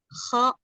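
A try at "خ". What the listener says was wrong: Lagi. Ah, masih ada itu getarannya itu.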